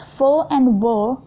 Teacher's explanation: The active articulator is the lower lip and the passive articulator is the upper teeth. The sounds f and v represent these sounds. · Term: labiodental